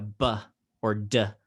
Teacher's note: has sound that comes from your throat so it's voiced